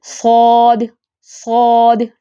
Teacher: جڑ سے زبان اٹھائیں، درمیان سے اٹھائیں، اور زبان کی نوک ثنایا سفلی کے قریب لے کے جائیں